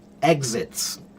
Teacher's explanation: there are some people who kind of turn it into a Z sound, and it becomes exits